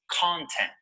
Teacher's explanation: Notice that the stress is on the first syllable.